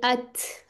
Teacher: ये ता जो है इसमें हमस है यानी सांस की आवाज आती है